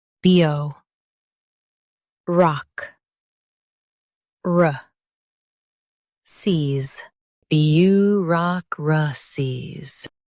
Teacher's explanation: Stress rock and keep cies light.